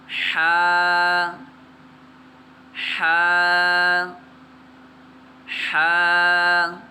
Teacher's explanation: اس میں خیال کرنا ہے کہ ہم نے حا کو حلق سے ادا کرنا ہے